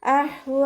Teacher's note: മദ് വാജിബ് മുത്തസിൽ. അഹ്വ ഹഇൻ്റെ മഖ്റജ് വസത്തുൽ ഹൽക്കാണ്, അതിൻ്റെ സൗണ്ടിനെ വ്യക്തമാക്കി കൊടുക്കുക. അവസാനത്തിൽ വാവിൽ നിർത്തുമ്പോൾ 2 കൗണ്ട് നീട്ടി നിർത്തി കൊടുക്കുക.